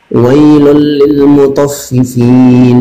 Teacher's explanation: Idgham itu dimasukkan teman-teman. Jadi huruf pertama itu dimasukkan langsung ke huruf yang kedua tanpa adanya dengung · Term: idgham bila gunnah